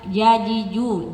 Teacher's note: Jadi tengah lidah ada di langit-langit.